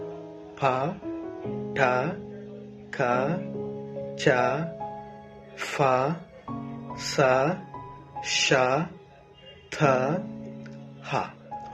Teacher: there are nine voiceless consonant sounds